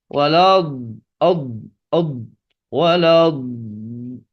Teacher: menempelkan kesan tebalnya yaitu menempelkan pinggir lidah kiri atau kanan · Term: Dod